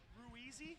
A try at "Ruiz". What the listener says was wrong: You said it Ruizy and some other weird shit. But it's Ruiz.